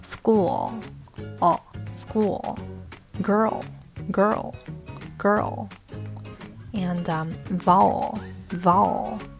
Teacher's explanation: the dark l that is when the l sound appears after a vowel